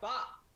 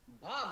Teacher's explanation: पा अल्प प्राण है, हा नहीं है। · कहीं ना कहीं हल्का सा हा आपको अनुभव होगा बोलते समय। ये महाप्राण ध्वनिया कहलाती है।